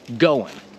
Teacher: Sometimes they won't pronounce the G at all